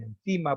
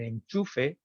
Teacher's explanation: Igualmente cambia dental en anda, interdental en encima, por poner algún ejemplo, palatal en enchufe